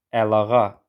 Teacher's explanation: Biri I ilə bitir, digəri A ilə başlayır. Deməli, tələffüz zamanı olacaq əlağa I saiti düşəcək. Burada yenə səs düşümü hadisəsi özünü göstərir.